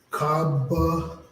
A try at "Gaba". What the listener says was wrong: No, that's in the beginning is the ga.